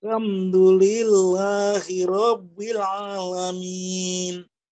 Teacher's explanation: Di tiap-tiap sukun ditekan Pak. Alnya al dikasih penekanan beberapa sepersekian detik.